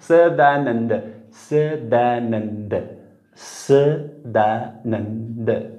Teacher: जिभेचा शेंडा दाताच्या बरोबर जवळ जातो पण चिकटत नाही नुसतं समा असं हिस्सिंग साऊंड ऐकू येत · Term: दंत्यस